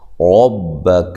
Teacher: را کو خوب موٹا کریں، را کے اوپر زبر ہو یا پیش ہو، را کو موٹا کیا جاتا ہے، یہاں زبر ہے۔